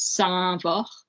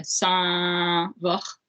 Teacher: a nasalized vowel in the first syllable